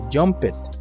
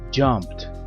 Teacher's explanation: la letra e no suena y la letra d suena como una t junto con una p